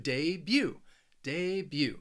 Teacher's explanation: you're not going to hear that that t at the end of the word · it has two syllables and the stress is on that second syllable